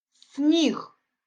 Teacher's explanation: перший звук у цьому слові с твердий приголосний його ми позначаємо однією лінією наступний Ні